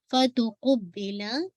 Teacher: Make sure बा पे शद है, तो बा शद की अदायगी वाज़ेह हो।